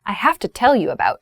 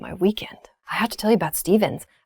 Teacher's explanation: so have to becomes hafta